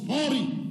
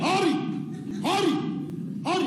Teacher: Un H très fort, un H aspiré